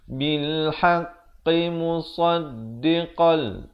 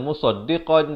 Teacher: idgham bila gunnah, masuk tanpa dengung. Asalnya musaddiqan, jadi di sini kena baca musaddiqal.